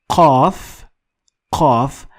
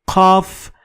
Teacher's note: But you need to dig a little deeper in your throat to find your qaf. So qaf is a little bit backward in your throat. Kaf is a little bit in front. So you need to go a little back in your throat and you will find the sound.